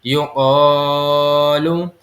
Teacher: ہم قاف کو موٹا کر کے ادا کریں گے کیونکہ یہ حروف مستعلیہ میں سے ہیں